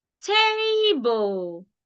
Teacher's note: that first syllable I stressed it while the second syllable I didn't stress it